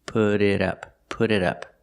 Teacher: The T in put changes to a fast D, put put it. And the T in it changes to a fast D. Put it up.